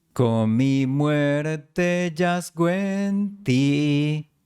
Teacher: En la tercera línea, la O de yazgo se une a la E siguiente. Y la N de con se fusiona con la M de mi en una M larga.